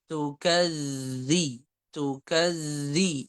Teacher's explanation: makhrajnya ujung lidah bertemu dengan ujung gigi seri atas itu makhrajnya Zal kemudian sifatnya dia jahar dan rakhawa Nah kalau dia bertasydid maka sifatnya dia rakhawa tukadzi tukadzi gitu